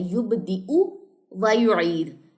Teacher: یُبْدِئُ، اس کو لمبا نہیں کرنا، حمزہ کی پیش ہے، یا تو یہاں پہ سائلنٹ ہے